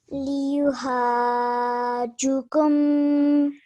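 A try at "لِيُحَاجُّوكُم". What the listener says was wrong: So you have to hold this tasdeed for 2 seconds. Liyuhajjukum. Liyuhajjukum.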